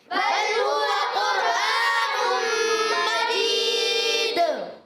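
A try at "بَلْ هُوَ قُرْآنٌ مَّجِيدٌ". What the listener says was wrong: بل لام کو ہلانا نہیں ہے، بل ہوا قرآن، را ساکن سے پہلے پیش آ گیا، را کو پر پڑھیں گے. قاف کا مخرج زبان کی جڑ، تالو کا نرم حصہ.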